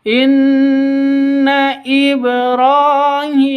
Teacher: nun tasdid gunah musyaddadah ya karena berdiri sendiri nun tasydidnya dengung dua ketukan